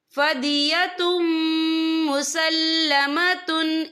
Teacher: یا دیکھیں فَدِيَةٌ، تا کے پر تنوین ہے، تنوین کے بعد جو ہے میم آ رہا ہے، میم جو ہے حروف یرملون میں سے ہے، تو یہاں پر ادغام ہوگا، تو ہم اسے غنہ کے ساتھ پڑھیں گے